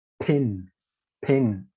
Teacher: So in order to highlight those words, the words that have the consonants like P, T, and K, like P, T, and K, they use the aspiration feature and add an extra breath